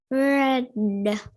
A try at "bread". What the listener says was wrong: Okay, keep the mouth a little more closed.